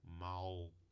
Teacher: Além de se colocar a ponta da língua atrás dos dentes ou nos alvéolos, se levanta a parte posterior da língua em direção ao véu palatino, ao palato mole